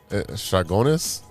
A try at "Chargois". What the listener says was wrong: There's no N at the end. There's no N in the word at all.